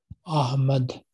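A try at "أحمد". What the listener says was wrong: It is not a, it is ah.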